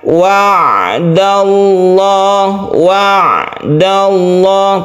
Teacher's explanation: kalau Ain ini ditekan tapi tengah-tengah jadi membacanya wa'dallah wa'dallah tidak boleh terlalu ditekan W atau terlalu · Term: tawassud